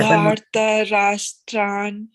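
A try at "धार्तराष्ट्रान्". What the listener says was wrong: It's not tran. There's a tra. You see that there's a ta. Ta for tum. That ta.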